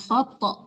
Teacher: Dipantulkan tonya karena itu huruf qalqalah